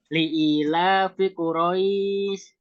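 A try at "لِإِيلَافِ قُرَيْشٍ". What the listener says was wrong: Tebal, Pak, tebal. Quraisy. Li'ilafi Quraisy.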